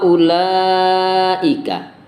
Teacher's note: Ulaika sama dibaca panjang, panjangnya 6 harokat, ya, atau 3 alif.